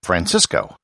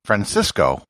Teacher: the colombians would pronounce it francisco and the spanish would pronounce it francisco with the spanish lisp